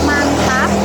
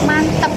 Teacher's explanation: kata ini berubah menjadi bunyi vokal A menjadi E